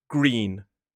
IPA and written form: ɡriːn (green)